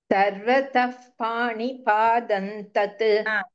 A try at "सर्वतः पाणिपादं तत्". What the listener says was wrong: You said Pranipadan tat.